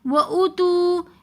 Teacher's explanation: ہم حمزہ کے پیش کو تو ہم جلدی پڑھیں گے وَأُو لیکن تو کو ہم تھوڑا کھینچ کر پڑھیں گے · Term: واو مدہ